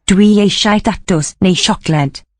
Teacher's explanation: Palatalization of the S to a sh